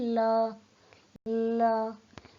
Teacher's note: आप उच्चारण करके देखिए, ल ल। तो देखिए, हमारी जीभ का अगला भाग मसूड़ों को छू रहा है और हमारे जीभ के दोनों तरफ से हवा निकल रही है। · पार्श्व का अर्थ है बगल और पार्श्विक का अर्थ है बगल का, यानी कि ला वर्ण के उच्चारण में जीभ का अगला भाग मसूड़ों को छूता है, पर जीभ के दोनों या एक तरफ का रास्ता खुला रहता है और उसी से हवा बाहर निकलती है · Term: पार्श्विक वर्ण